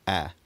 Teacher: the trap vowel of this period was still pronounced something like a, like the king still pronounces it today, rather than the lower a quality found in northern England and other parts of Europe.